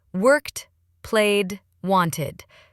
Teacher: >> Quick sound tip for ed endings. Worked ends with a t- sound. Played ends with a d sound. And wanted adds an extra syllable. ID. So worked, played, wanted.